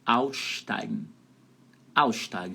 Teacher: Esses dois S's aí da palavra aussteigen pode juntar e ficam tipo um carioquês assim, tipo um X.